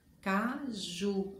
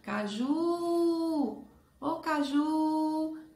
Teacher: A sílaba mais forte é ju. A última sílaba, caju.